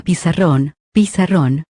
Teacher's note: la última es la sílaba tónica